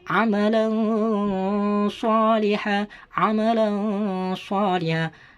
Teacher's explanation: seakan-akan berdengung dan samar. Gak dibaca nun, gak dibaca seakan-akan berdengung.